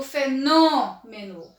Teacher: o nó é a minha sílaba mais forte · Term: sílaba tônica